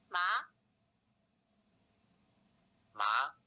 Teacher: in chinese the tone rises from mid level to high level we say it as a 3 5 contour because it starts at mid pitch level 3 and then rises to end at high pitch level five we can also describe the second tone as a mid rising